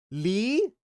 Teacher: it sounds more like an L at the beginning and an R at the end